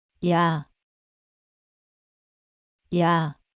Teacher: to pronounce yah you can start with E and move to the sound of ah say it loud yeah yeah similarly to make yo start with